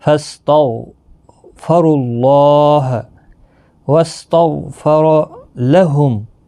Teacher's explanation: غین ساکن کو ہلانا نہیں، غین بھی پر پڑا جائے گا، را بھی پر پڑا جائے گا